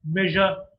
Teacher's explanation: together when the air passes through this lot of vibration involved it's post alveolar because the tip of the tongue touches the back of the alveolar fricative because there is a narrowing or the stricture of close · fricative because there is a narrowing or the stricture of close approximation